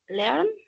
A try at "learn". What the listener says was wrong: Hazlo un poquito más cerrado. Learn.